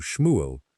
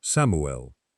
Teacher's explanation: There is no sh sound in classical Greek. So, the shin becomes a simple sigma, an S. And there is no equivalent at all for the final letter, the ayin, a sound that does not really exist in Greek or Latin.